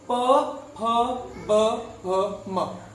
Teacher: प वर्ग का उच्चारण ओष्ठ से होता है